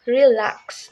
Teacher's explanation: the stress is on the second syllable LAX